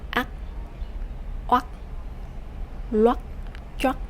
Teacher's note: For the rising tone, you have to raise your voice to make it higher.